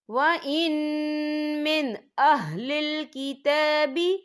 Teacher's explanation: وَإِن مِّنْ أَهْلِ الْكِتَابِ، یا دیکھیں وَإِن، یہاں نون ساکن ہے، نون ساکن کے بعد جو ہے میم آ رہا ہے، اور میم جو ہے حروف یرملون میں سے ہے، تو یہاں پر ادغام ہوگا، تو ہم اسے غننے کے ساتھ پڑھیں گے